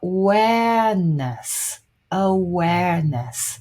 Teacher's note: the stress is the second syllable